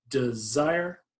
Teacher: so it's unstressed stressed like that